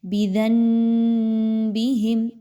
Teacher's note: کچھ لوگ اس کو اس طریقے سے پڑھتے ہیں بِذَنبِهِمْ، تھوڑا سا بیچ میں نون کی بھی آواز نکالتے ہیں اور اس کے بعد میم تھوڑی سی پڑھتے ہیں کہ دونوں چیزیں پڑھی جائیں۔